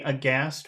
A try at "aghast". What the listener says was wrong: Try to make your voice, you've got a deep voice, but try to make it a little bit higher. Aghast. But because it's the end of a phrase, you want to finish low.